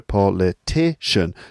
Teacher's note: So the word stress is now on the 3rd syllable.